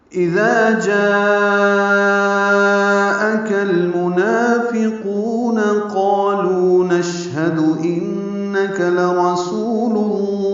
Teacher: جاءک میں مد متصل ہے, الف مدہ کے بعد حمزہ ایک کلمے میں آنے کی وجہ سے